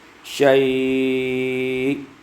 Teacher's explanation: madlin mahmuz karena ada hamzah di situ, dipanjangkan 4 atau 6 harakat, dibaca 4 atau 6 harakat, waslan wa waqfan, baik wasal maupun waqaf.